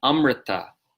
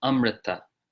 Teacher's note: there again we get a vocalic R so it's in the word amrita meaning nectar